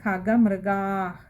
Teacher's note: അകാരം നീട്ടി എടുക്കുകയും വേണം പകുതി ഹകാരത്തിൽ വായിക്കുകയും വേണം